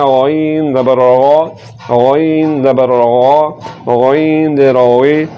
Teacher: پر یعنی کہ موٹا کر کے پڑھنا ہے، اور زبان کی جڑ کو تالو کی طرف بلند کرتے ہوئے اس کو پڑھنا ہے